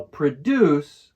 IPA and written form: prəˈdjuːs (produce)